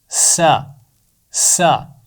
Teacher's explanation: तो इसका मखरज भी ज़ा के पास है, यानी ये ज़ा का दोस्त है। तो सीन का मखरज है ज़ुबान की नोक नीचे वाले दांतों के सिरे से लगेगी